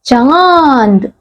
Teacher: तो बच्चों, यानी कि जिसे हम चंद्र बिंदु की मात्रा कहते हैं, उसका जो उच्चारण है किस प्रकार से किया जाता है, नाक और मुंह दोनों से किया जाता है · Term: अनुनासिक